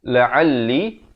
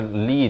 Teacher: Kemudian la'alli, lam itu bersabdu tekankan, dan juga li itu dipanjangkan 4 atau 5 harakat